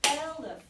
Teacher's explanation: But then the trick here, the reason this fourth one is in here, so that you can see that it's the unaccented syllable, not just the first syllable, because elephant, the unaccented syllable is the second one in this case, and the child is deleting it.